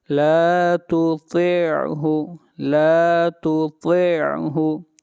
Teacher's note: پہلا تا پھر طا، طا کو موٹا پڑھا جائے گا